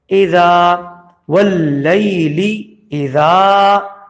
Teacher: اس کے بعد ہے اذا، حمزہ زے ای پہ سے گزر کے زال کو ایک الف کے برابر کھینچا جائے گا، کیونکہ زبر کے بعد الف آیا ہوا ہے